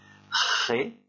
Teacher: Le premier G se prononce comme le G en français devant un A, c'est-à-dire G, et le deuxième se prononce avec le fond de la gorge, Ré, d'accord.